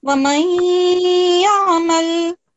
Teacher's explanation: This is Noon, Sakin is merging with Ya Mushaddad, so it is giving a nasal sound